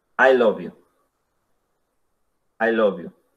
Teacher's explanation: ahora a este mismo I love you le vamos a dar un falling tone.